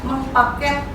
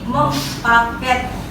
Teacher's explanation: Ini contoh bagaimana bunyi N pada awalan berubah menjadi M untuk menyesuaikan dengan bunyi awal kata dasar.